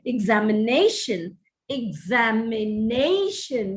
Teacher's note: examination the accent is on the fourth syllable